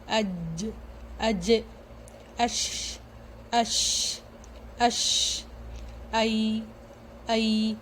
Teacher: اب دیکھیں یہاں پہ زبان کا جو بیچ جو ہے نا اوپر کے اپوزٹ سائڈ اوپر والی تالو سے جا کے جب لگتی ہے، زبان کا بیچ والا حصہ جب اوپر کی تالو سے لگتی ہے تب جیم اور شین اور یا کی ادائیگی ہوتی ہے. When we touch the middle of the tongue on the middle of the palate, then we say جیم شین and یا غیر مدہ.